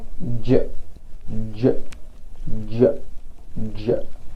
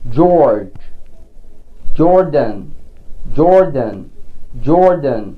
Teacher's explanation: زي ما بنطق صوت ج ج ج ج، زي ما بقول جورج، جوردن، جوردن، جوردن، بحس ان لساني بيرجع لورا ومقدمة اللسان بتلمس البالت او الهارد بالت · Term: palatal sounds